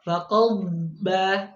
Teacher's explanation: Seharusnya waqabbah, rokhawah mengalir suaranya.